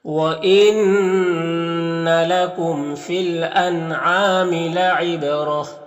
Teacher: با کو ادا کرتے وقت اس کی آواز اپنے مخرج سے ٹکر کھا کر الگ ہو جائے گی۔ را کے اوپر زبر ہے تو را کو پر پڑھیں گے۔ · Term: قلقلہ